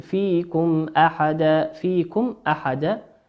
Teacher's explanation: ميم ساكنة أتى بعدها حرف الهمزة، والهمزة من حروف الإظهار